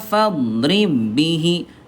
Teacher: Ayah Bunda ini idgham kamil langsung dilebur aja. Ya fadrib bihi, enggak usah ditahan ya.